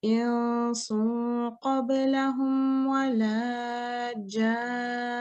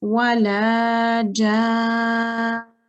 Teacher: So you have to join the noon mushaddad to the elongation of the jim.